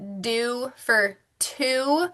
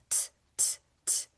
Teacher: So the T, the letter T, that tongue is right behind the top teeth. T, it's a quick hit.